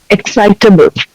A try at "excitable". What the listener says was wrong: Yeah, good.